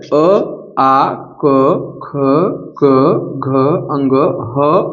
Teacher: इनका उच्चारण स्थान क्या है कंठ है